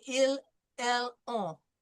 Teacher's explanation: The ON is nasal.